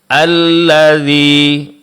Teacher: Alladzi mad ya setelah huruf dal